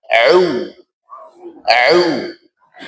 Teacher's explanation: Ain letaknya di wasatul halq, tenggorokan tengah.